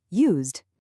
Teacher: You can hear it's a much softer, more vibrating sound than that sharp t.